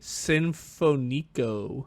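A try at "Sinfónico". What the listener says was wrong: You put the accent on the wrong. There's literally an accent above that O. Nietzsche Sinfonico. Yeah, that's what the little accent is, where you put the stress.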